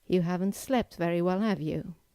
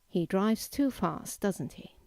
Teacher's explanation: the second usage of a question tag is to reinforce a statement you have made and get agreement from your listener. In this case, you need to use a falling intonation